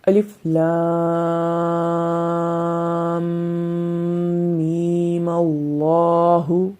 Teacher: یہاں پر میم کو ہم نے لمبا نہیں کیا، جب ہم وقف کریں گے تو اس کو لمبا کریں گے